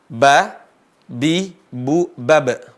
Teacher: Masih ingat di mana tempat keluar huruf ba? Ba itu dua bibir.